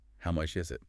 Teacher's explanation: Stress on is signals the question about cost.